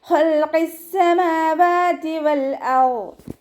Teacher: അഖ്സൽ ലിസാനാണ് മഖ്റജ് വരുന്നത്, നാവിൻ്റെ അവസാന ഭാഗം. നാവ് അവസാനിക്കുന്ന ഭാഗത്തു നിന്നാണ് ഖാഫ് പുറപ്പെടുന്നത്